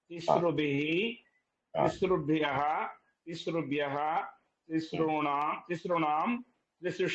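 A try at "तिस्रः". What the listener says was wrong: Correct, perfect.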